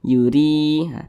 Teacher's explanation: Huruf ra ini dibaca tipis karena dia memiliki harokat kasrahnya, sehingga dibaca tipis. Yuri. Kemudian ri dibaca panjang, mad tabi'i.